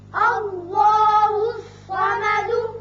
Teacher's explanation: الف پر زبر ہے لہذا اس میں اللہ کا لام پر کر کے پڑھا جائے گا